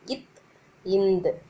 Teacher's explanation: இட் இன் நாவின் நுனி அன்னத்தின் நுனியை பொருந்துவதால் இட்டு இன்னு பிறக்கிறது அப்படி. இத் இந்து நாவின் நுனி மேல்வாய் பல்லின் அடியை தொடும்போது இத்து இந்து பிறக்குது